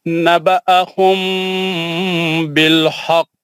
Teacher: नहीं, गलत पढ़ा आपने, मीम साकिन के बाद बा गुन्ना करना था, नहीं किया आपने।